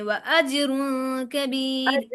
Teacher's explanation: و اجرن پڑھتے ہوئے نا عین کی طرف حلق میں آواز نہیں لے کر جانی، و اجرن کبیر أجر آرام سے پڑھنا ہے۔